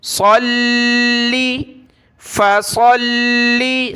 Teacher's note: تو لام کے اوپر شد ہے، تشدید ہے، اس کو جمع کر پڑھیں گے لام کو۔